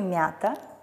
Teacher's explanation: они обозначают один звук и смягчают предыдущий согласный например слове мята буквой а обозначает звук а при этом смягчают предыдущий согласный м